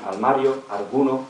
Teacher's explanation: la igualación o permuta entre L y r ante consonante